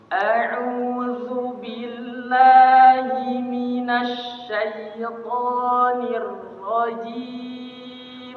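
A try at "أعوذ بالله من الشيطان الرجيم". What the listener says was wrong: Ra-nya fakhimir ra, tebalkan lagi ra. Minasyaitonir rajim.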